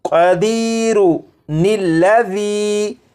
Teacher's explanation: ان دونوں الفاظ کو آپس میں ملانے کے لیے ان کے درمیان ایک نون کا اضافہ کریں گے اور پڑھیں گے قدیرو، اس کے بعد نلا، نلذی، قدیرو، نلذی، یہ درمیان میں جو نون ہے نلا، نل، نل، یہ جو نون ہے یہ نون قطنی ہے۔